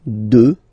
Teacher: Final x not pronounced, okay.